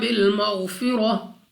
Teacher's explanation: غین مستعلیہ میں سے ہے، موٹا پڑھیں گے